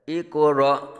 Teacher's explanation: قاف میں قلقلہ اور حمزہ ساکنہ میں جھٹکا دیں گے